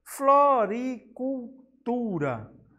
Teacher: Podemos ver que o tu é a sílaba com maior intensidade sonora. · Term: sílaba tônica